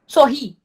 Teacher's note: Separa o R, fica aqui o sor, aí o ri vai ficar separado. O ri, sorrir, tá sendo mais forte? Tá sendo mais forte, então é uma palavra oxítona.